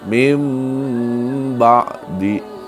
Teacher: maka cara membacanya itu mengubah bunyi dari nun mati menjadi huruf mim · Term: iqlab